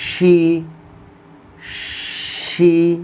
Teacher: শিন জের শি, তালব্য শ এর উচ্চারণ আসবে।